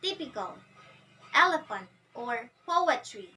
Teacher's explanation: starts with the stress and ends with two unstressed syllables so it sounds like the dumb for example the words typical